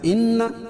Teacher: ان نون مشدد اس میں غنہ ہوگا